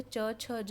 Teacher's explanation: च वर्ग का उच्चारण जो होता है च, छ, ज, इनका उच्चारण तालु से होता है। तालु हुआ मूर्धा और जो हमारा दंत हुआ उसके बीच का स्पेस।